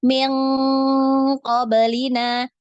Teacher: jadi naik ya, karena huruf qaf ini termasuk huruf isti'lah, dinaikkan